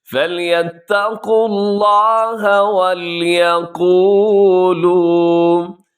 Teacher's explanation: وَلْيَقُولُوا دونوں کو برابر لمبا کیجیے گا، قو اور لو